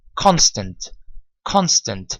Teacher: you hold on to the t sound and then you move on to the n sound